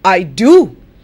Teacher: if i want to emphasize then how do i say it i say i do i'm stressing the word do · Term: special emphasis